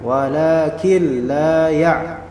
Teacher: Dinamakan sebagai idgham. Jadi di sini idgham tanpa adanya dengungan di sini, langsung walakin la itu namanya idgham. La ada mad tabi'i 2 harakat.